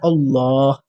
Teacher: اللہ میں پر موٹا کر کے کر رہا ہوں کیونکہ الف پر زبر ہے